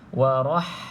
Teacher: Okey, pastikan tuan-tuan dan puan-puan bezakan bunyi huruf ha di sini dan juga huruf ta ni. Kalau kita berhentikan, kita sebut tadi bunyinya seperti huruf ha. Maka bezakan dekat sini ha spicy ataupun ha pedas.